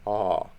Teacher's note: It's open, it's an open vowel, and it's a backgrounded vowel. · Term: ptacha